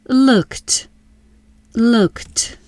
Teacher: Looked equals look plus ed. Look ends with k. K is voiceless. Ed says t. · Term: final t sound